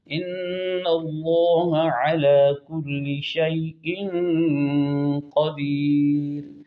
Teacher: قدیر کی را جو ہے باریک پڑی جائے گی